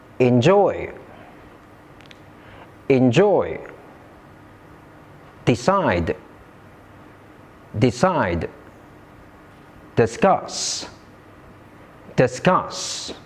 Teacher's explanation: All these words are verbs and all of them have the stress on the second syllables.